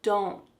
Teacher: that T is just going to be stopped at the top of your mouth. Don't. So you're making a slight N sound, but you want to make sure that that T is stopped.